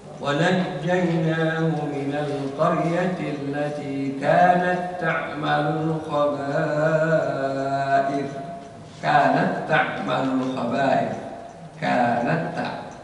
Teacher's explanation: Jadi ya, itu lebur sempurna, ya, idgham kamil namanya. Sehingga hams sifat dari ta pada kata kanat itu tidak terdengar sama sekali. Karena dia langsung masuk ke ta berikutnya dan leburnya atau idghamnya sempurna.